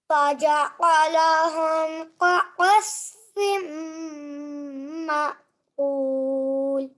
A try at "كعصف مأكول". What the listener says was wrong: Okay, again, it feels like you're making a thick sound. Ma'kul.